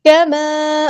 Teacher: الف مدہ ہو رہا ہے، مد اصلی کریں گے